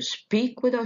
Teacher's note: Did you speak with her? شوف with her جايين كلمتين هم في الآخر مش واخدين stress.